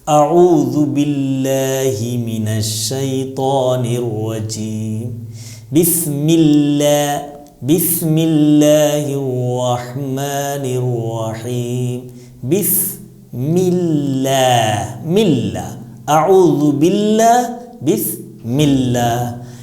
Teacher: اللہ کے لام سے پہلے اگر زیر آ جائے تو اس لام کو پتلا ادا کیا جائے گا